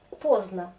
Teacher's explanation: Ça s'écrit avec D, mais je prononce pozna et c'est plus facile.